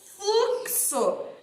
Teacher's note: Então, fluxo tem som de CS.